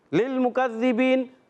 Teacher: लाम को लाम से मिलाना है, लाम को हिलाना नहीं